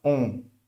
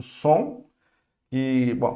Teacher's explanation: E por último, a gente tem o ON, beleza? O ON ele tem um som tipo do português, bem redondinho ou, ok, com nasal.